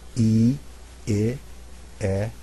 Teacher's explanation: as I say those first four vowels my jaw drops farther down each time I pronounce them